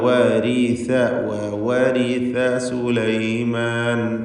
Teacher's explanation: നാവിന്റെ തലപ്പിന്റെ മുകൾഭാഗം പിന്നെ മേലെ മുൻപല്ലിന്റെ അറ്റവും ഇവ രണ്ടും കൂടി ചേരുമ്പോഴാണ് സിന്റെ ഉച്ചാരണം